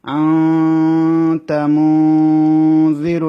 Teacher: নাকের মধ্যে নিয়ে দুই আলিফ সমান রাখতে হবে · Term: গুন্না